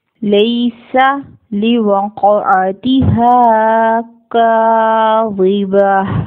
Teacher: قاف ایک heavy letter ہے, اس کو پر ادا کریں گے خواہ اس کے اوپر سکون ہی کیوں نہ ہو. قاف کے اوپر سکون ہے, اس کو جھٹکا دے کر ادا کریں گے, قلقلہ کریں گے